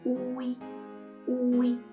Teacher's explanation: For this combination, now you have to pronounce the U longer and the E shorter.